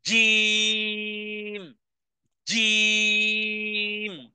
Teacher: জিহ্বার মধ্যখান তার বরাবর উপরে এর তালুর সাথে লাগিয়ে আওয়াজকে কঠিন থেকে কঠিন করে উচ্চারণে ধাক্কা দিয়ে বলতে হবে